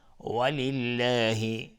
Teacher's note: ولله لفظ جلال ترقیق است اینجا چون قبلش کسره اومده.